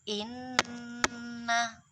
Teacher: karena ditasydid maka dibaca mendengung, dibaca 2 ketukan